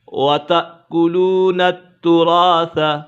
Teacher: یہاں پر حمزہ ساکنہ ہے، حمزہ ساکنہ میں ہمیشہ جھٹکا ہوگا